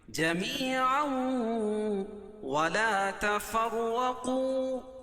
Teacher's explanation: جمیعا، یا ساکن سے پہلے میم کے نیچے زیر ہے تو یا مدہ، اور تنوین کے بعد ادغام مع الغنہ کے 4 حرف، یا واو میم اور نون میں سے واو ہے تو یہاں غنہ کر کے پڑھیں گے